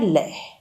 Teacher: ल के उच्चारण में सांस जीभ के दोनों पार्श्व से निकलती है, इसलिए यह पार्श्विक व्यंजन कहलाता है।